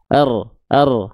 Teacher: Karena kalau huruf R itu ya dia getarannya banyak biasanya R r sedangkan huruf ro getarannya enggak banyak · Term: takrir